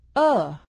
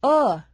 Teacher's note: make your lips a little round to make the uh sound as in book